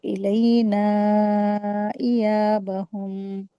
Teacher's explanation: مد جائز کا رول اپلائی کریں گے، 4 حرکات کھینچیں گے اس کو